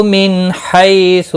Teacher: نون ساکن کے بعد حروف حلقی میں سے ح آیا ہے، اظہار حلقی ہوگا، گنہ نہیں ہوگا۔